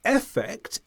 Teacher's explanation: It's important to point out, though, because of the rules of English where we weaken vowels that are not the stressed syllable, this means that effect, if said quickly, can sound just like affect when it's spoken.